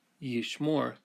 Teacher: the accent falls on the last syllable and we use a holum to mark it